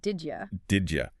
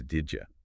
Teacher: Instead of saying did pause you, the add sound at the end of did sort of blends with the Y sound at the beginning of you, and the vowel in you gets weaker. It just kind of collapses into did ya.